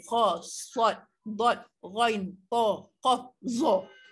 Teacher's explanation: suara yang terhasil dari terangkatnya sebahagian besar pangkal lidah ke kawasan anak tekak. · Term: isti'la